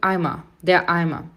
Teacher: O EI tem som de I, o ER no final tem som de Azinho